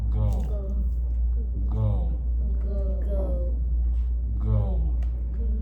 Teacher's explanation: you'll feel how the back of your tongue moves against the top of your mouth to create these words